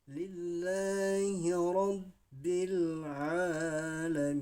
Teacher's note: Kemudian lillahi rabbil alamin. Nah di sini ain juga mat tabi'i hukum bacaannya, sehingga kita membacanya 2 harakat atau 2 ketukan